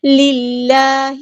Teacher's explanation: اللہ کا جو لام ہے باریک پڑھیں گے